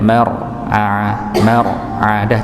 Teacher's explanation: cukup sekitar du tiga getaran saja. Nah, ini bagusnya seperti itu, nggih.